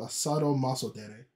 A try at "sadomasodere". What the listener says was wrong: So, also, this time, don't pronounce it Sado, because it's actually using the Greek roots. It's just sadistic. Sadistic, not sadistic. The correct pronunciation would be the less weeby pronunciation for this.